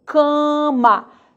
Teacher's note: o primeiro a ele sofre nasalização o último perceba já está oral